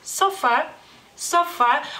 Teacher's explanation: porque el acento sí lo tiene justo sobre la a no más que la a no es tan larga en lituano · la a no es tan larga en lituano es una a corta